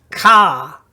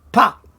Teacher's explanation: It's a slightly longer A sound, so it's ka, as opposed to pa. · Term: kataf kamatz